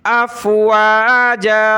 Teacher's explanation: جب رکیں گے وقف کریں گے تو زبر کی تنوین میں آخر میں الف آ جاتا ہے